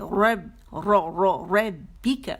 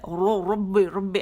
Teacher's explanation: با کو موٹا نہیں کریں گے, با باریک رہے گا. صرف را جو ہے ظاہری شکل ہم دیکھیں گے کہ را موٹا ہوگا